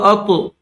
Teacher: طا حروف قلقلہ میں سے ہے تو اس کو ظاہر کر کے پڑھیں گے